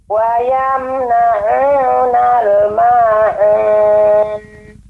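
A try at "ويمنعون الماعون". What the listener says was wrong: Untuk ain terus nanti berlatih Bu ya, agar lebih lembut lagi pengucapannya. Namun secara umum bacanya bagus.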